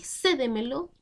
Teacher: Porque se acentúa en la anterior a la antepenúltima sílaba y también siempre llevan tilde. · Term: palabra sobresdrújula